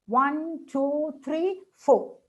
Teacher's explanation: Last one with a falling, all the others with rising.